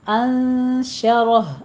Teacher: انشرہ، نون ساکن کا قاعدہ اخفا کی کریں گے، اور رہ کو پر پڑھیں گے